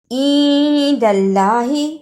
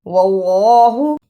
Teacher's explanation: جس اللہ سے پہلے زبر یا پیش ہو اسے پر یعنی موٹا پڑھتے ہیں